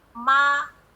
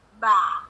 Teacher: Misalnya, huruf mim dengan ba. Huruf mim dengan ba itu kan makhrajnya sama-sama di bibir ya, Bu.